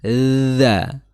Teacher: Kalau yang dza itu ada dza ada durasi untuk mengalirnya suara